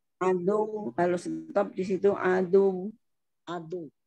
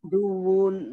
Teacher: Kalau stop Pak, di sini waqaf wawunya dimatiin jadi adu.